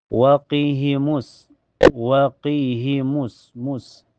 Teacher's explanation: Di awal ayat di sini ada hukum alif lam asyamsiyah. Karena alif lam ketemu huruf syamsiah, yaitu sin. Cara bacanya langsung masuk ke sin.